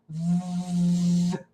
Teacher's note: The letter V is a voice sound. If we put our hands on our throat, we can feel our vocal cords vibrate as we make the VV sound.